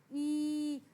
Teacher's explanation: अगर आपसे कोई पूछे कि स्प्रेड लिप्स की साउंड कौन सी है, तो ई की जो साउंड है आप बोल के देखें, ई एक लंबा वोवल साउंड प्रोड्यूस कर रहा है और ये स्प्रेड लिप्स है